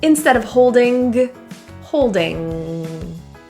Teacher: The ing in holding is a nasal the back of the tongue sound. There is no hard G, g, g, g. Instead of holding, holding.